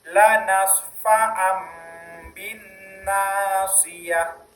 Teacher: Iqlab yaitu mengubah suara nun menjadi mim.